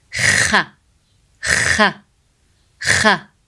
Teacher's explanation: Kha sound is pronounced from top throat. So it's the throat letter.